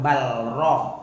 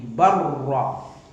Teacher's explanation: Barra, jadi lamnya hilang. Idgham mutaqarribain ini, lam dan ra ini berdekatan makhrajnya ini.